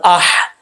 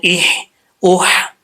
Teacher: یہ جو ہا ہے یہ حلق سے نکلتا ہے